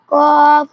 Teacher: জিহ্বার গোড়া তার বরাবর উপরে তালুর সঙ্গে লাগাইয়া 2 নুক্তাওয়ালা কফ উচ্চারিত হয়